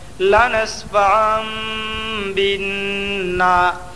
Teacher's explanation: پڑھیں گے بلکہ بعد والے حرف سے ملا کر پڑھیں گے نون مشدد میں ایک الف کے برابر غنہ ہوگا